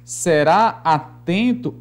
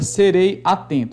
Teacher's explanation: o som do e e o som do a não se misturam numa única emissão de voz